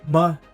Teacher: Neutral tone. Ma is a question particle, light and quick, like clicking a website.